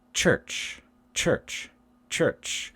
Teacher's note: we've got the u and the r and that's voiced but the ch ch ch is voiceless